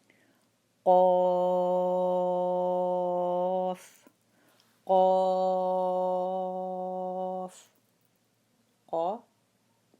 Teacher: the Qaf is harf mufakham, so when we come to it we have to do it harf mufakham, okay, with a strong sound